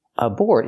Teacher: Put the stress on the second syllable. Aboard is an adjective.